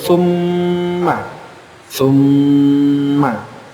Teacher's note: itu boleh dua sampai tiga harakat menahannya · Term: gunah